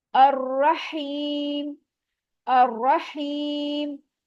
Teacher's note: रॉ पे जबर है, हैवी होगा, या साकिन है, उससे पहले जेर आ रहा है, टू काउंट, इसको स्ट्रेच करेंगे, या मत हो रही है।